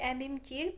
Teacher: əmim gil burda gilə vurğu düşə bilməz